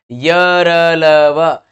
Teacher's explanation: बीच का सा यानी कि स्वर भी और व्यंजन भी दोनों के बीच में रहने का प्रयास करता हो, ऐसा दिखाई पड़ता हो उन्हें। इनके उच्चारण में जीभ मुंह के किसी भाग को पूरी तरह स्पर्श नहीं करती है। अंतस्थ व्यंजन य र ल व किसी भी एक भाग को पूरी तरीके से नहीं, बल्कि सभी भागों को थोड़ा थोड़ा टच कर रही है, वह य र ल व है।